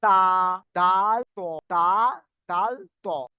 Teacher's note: জীভের আগার কিনারা এবং সামনের উপরে দুই দাঁতের গোড়ার সাথে লাগিয়ে উচ্চারিত হয়